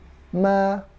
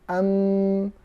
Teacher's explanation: Setengahnya di bibir, dua bibir. Setengahnya di khayshum. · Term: huruf mim